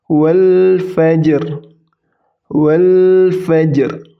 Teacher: ja sukun karena ini huruf qolqolah jadi dipantulkan